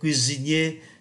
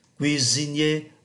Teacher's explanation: Thế còn bạn, bạn vẫn làm nghề đầu bếp phải không? Cuisinier, chúng ta phát âm S thành Z bởi vì nó đứng giữa hai nguyên âm